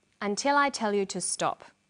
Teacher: Did you hear the falling tone at the end?